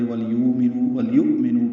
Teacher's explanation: حمزہ ساکن روایت حفص میں جھٹکے سے پڑھا جاتا ہے